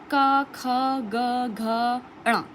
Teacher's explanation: जिन वर्णों को बोलते समय जीभ का पिछला हिस्सा कंठ को छुए उसे हम क्या कहेंगे, कंठीय व्यंजन